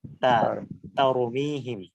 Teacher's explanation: তাটা তা একটু চিকন তা ভাবে উচ্চারিত হচ্ছে, তয়ের মতো না